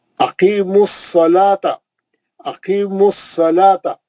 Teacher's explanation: स्वाद जो शमसी हर्फ था तजदीद के साथ आया, उससे पहले का अलिफ लाम नहीं पढ़ा जाएगा। मीम पे जो पेश है, अकीम मीम के ऊपर जो पेश है वो पेश जाके स्वाद से मिला, स्वाद से मिलके पड़ गया।